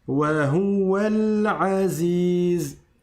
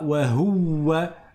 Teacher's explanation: Je ne prononce pas cette hamza, ce alif, comme ce petit signe l'indique, qui est un sad, qui veut dire wasl, c'est-à-dire la liaison. Et donc, je passe du waw au lem.